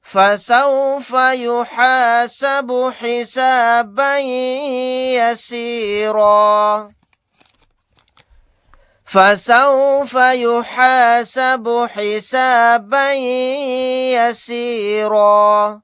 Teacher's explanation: تنوین کے بعد یا آ گیا، یہاں پر ادغام غنہ کا قاعدہ ہوگا، یا کے اندر ادغام کر کے پڑھیں گے۔